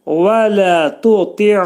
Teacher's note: Sonra vələ tuti' vələ tuti' ta'dan sonra gələn i ılaşır. Vələ tuti' ayn hərfinin üstündə ani müddətdə tormuzlanma boğazın ortasından çıxarırıq